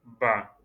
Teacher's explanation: la bouche se ferme et il y a les lèvres qui se touchent et vous basculez sur les lèvres et ça donne le son Ba, comme le montre l'image.